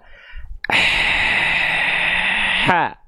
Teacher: Ya, dari bagian tengah tenggorokan. Jadi karakter nafasnya berbisik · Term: nafas berbisik